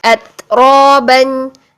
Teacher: ता साकिन में हमने आवाज को बंद किया और सांस को जारी किया